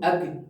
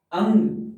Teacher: अनुनासिक, इसमें मुंह के साथ साथ फेफड़ों से उठी हुई हवा नासिका से भी बाहर निकले